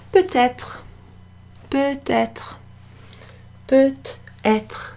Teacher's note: you can hear that t, the T sound, and that's because it comes before the E, the E sound in être